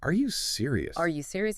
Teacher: You say that monotone, it almost sounds like you're not really asking or maybe you're being sarcastic, but put a slight upward inflection at the end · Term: rising intonation